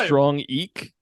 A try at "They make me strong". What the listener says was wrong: No, just leave it at strong. Rhymes with wrong.